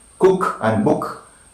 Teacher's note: back, above, half close, rounded and short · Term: short oo